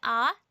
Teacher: आ अगर आप उच्चारण करके देखेंगे आ तो इसमें पूरा मुंह खुल जाता है। अर्ध विवृत है।